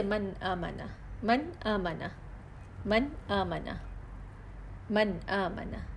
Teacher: وہ نون جو ظاہر ہو رہا ہو، بالکل کلیئر پڑھا جا رہا ہے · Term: غنہ اصلی